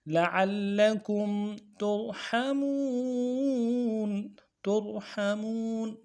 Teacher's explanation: کو موٹا کریں گے، حا کو گہرائی سے ادا کریں گے، میم میں واو مدہ ہے، واو ساکن سے پہلے پیش واو مدہ، ایک الف دال میں کھینچیں گے ، نون کو ساکن کریں گے، ترحمون، وقف کی صورت میں